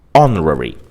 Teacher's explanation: We also say an honorary degree because the word honorary begins with the letter H which is a consonant letter but it begins with a vowel sound o